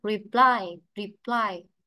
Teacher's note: Cố lại ví dụ nhé, từ này ta đọc là reply, reply. Vậy trọng âm thì rơi vào âm tiết hai